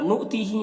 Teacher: حمزہ ساکنہ ہے واو کی شکل میں، تو اسے جھٹکا لگا کر پڑھنا ہے. تی میں یا مدہ ہے، ایک الف کے برابر کھینچیں گے.